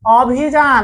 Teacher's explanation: রস্যইকার থাকার কারণে অ এর উচ্চারণটা হয়ে যাচ্ছে ও এর মতো।